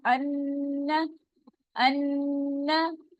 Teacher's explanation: नून मुशद्दद है, नून के ऊपर तशदीद है, यहाँ गुन्ना होगा, टू काउंट से इतना गुन्ना हम करेंगे, आवाज को थोड़ी देर यहाँ पर हम स्टे कराएंगे नाक के अंदर।